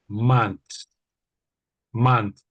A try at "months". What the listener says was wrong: the very first one you said, I think it's the way the Americans say it. It was exactly how the Americans say it, I would say. So the Brits, almost all Brits, sort of try to say the TH, and it's sort of months, months.